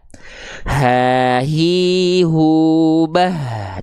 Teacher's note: Tuh dialirkan dari pangkal tenggorokan ya. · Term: H besar